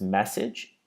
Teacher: here we have the stress on the first noise, me, and then in this case, it doesn't change because the second noise is naturally a kit vowel, message.